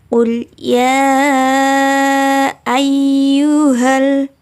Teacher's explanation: ya di sini dibaca panjang 4 harokat sampai 5 harokat